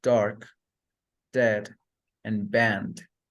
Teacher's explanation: The next plosive consonant is D, which is alveolar, plosive, and voiced.